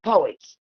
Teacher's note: there's no aspiration in the final voiceless alveolar plosive when it's followed by voiceless alveolar fricative, because it is not at the beginning of a stressed syllable, right?